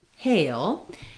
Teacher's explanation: the hail in American English is a diphthong. And so the error pattern I often hear on words like this is that non-native speakers will use simply the A vowel by itself, A.